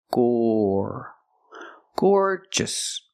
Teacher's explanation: the first syllable is the long or sound like floor and more